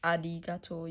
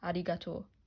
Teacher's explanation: then that's how you say in Japanese I also learned that in Japanese R is spelled with kind of an l sound